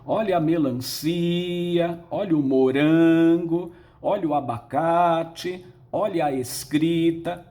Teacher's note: a sílaba tônica nesses quatro exemplos é a penúltima a palavra é portanto paroxítona